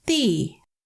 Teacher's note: They are third tone markers, so they stretch the into the.